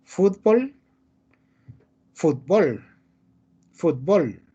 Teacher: méxico y centroamérica pronuncian agudo